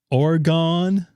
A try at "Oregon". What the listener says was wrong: You sound like you say organ like like an organ donor.